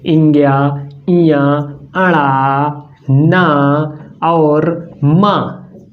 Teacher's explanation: इन पांचों वर्णों का उच्चारण स्थान नासिका होता है